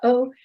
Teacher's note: we call it a glottal stop because the air comes up into your glottis and stops